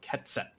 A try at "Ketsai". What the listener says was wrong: Ketsai. There's like an I at the end.